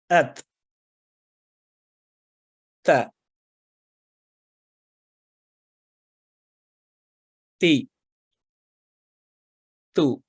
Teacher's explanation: تا زبان کی نوک کو اوپر والے سامنے کے 2 دانتوں کے مسوڑوں سے جب لگاتے ہیں تو یہ حرف ادا ہوتا ہے اور باریک آواز میں ادا ہوتا ہے. اس کا مخرج ہم نے سمجھا تھا کہ جب الف حمزہ الف کے ساتھ اس کو ساکن کر کے ملائیں، ات تا تی تو یہ فتحہ کسرہ اور دمہ کے ساتھ.